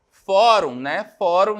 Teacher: é uma palavra paroxítona uma paroxítona penúltima sílaba tônica